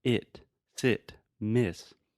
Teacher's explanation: the e sound which does not exist in Brazilian Portuguese so this is the sound in words like it sit Miss